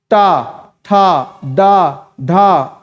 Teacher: ट ट कहते ही आपकी जीभ मुड़ जा रही है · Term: मूर्धन्य वण, मूर्धन्य वर्ड